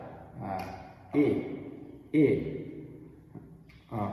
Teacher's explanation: E também é um pouco mais aberto e geralmente um pouco mais curto. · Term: short I